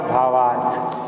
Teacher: जैसे यहाँ पर दिया है अ प्लस अ, मतलब दो शब्द हैं तो एक शब्द के लास्ट में अ रहेगा और दूसरे शब्द के शुरू में आ रहेगा, तो दोनों मिलकर के आ होगा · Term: दीर्घ संधि